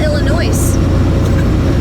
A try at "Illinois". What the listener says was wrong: I know you don't say it like that. The S is silent. It's not Illinois, it's Illinois.